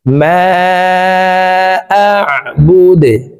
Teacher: দাল কলকলার হরফ নিচের দিকে ধাবিত করে ধাক্কা দিয়ে দালকে সাকিন করে ফেলবো